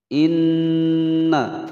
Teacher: Nun bertasydid cara membacanya tekan dan ditahan selama dua ketukan